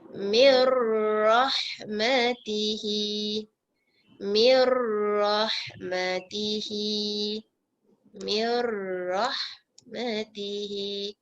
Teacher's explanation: Mim terus masuk dekat ra tanpa dengung.